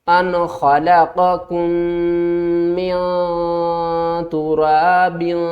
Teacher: اب ہم نون کی آواز کو ظاہر نہیں کریں گے بلکہ نون کی آواز کو چھپا کر پڑھیں گے، کیونکہ آگے دیکھیں تو یہ تا آ رہا ہے. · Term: اخفا